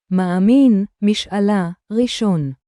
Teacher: in this word, the (א / alèph) is placed after the syllable (ma) and it clearly marks a break between the syllable (ma) and the rest of the word